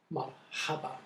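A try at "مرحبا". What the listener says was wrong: Mm-hmm.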